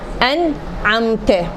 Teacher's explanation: ان اس کے بعد حروف حلقیہ آ گئے تو واضح کریں گے، نہ غنہ دیں گے نہ کھینچیں گے